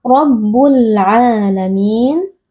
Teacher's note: ada alif lam qamariyah karena alif lam bertemu dengan huruf ain yang merupakan huruf qamariyah dibaca dengan jelas